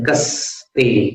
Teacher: कस्ते में आपको दांत के पीछे लाना है जीभ को, दंत स, कस्ते।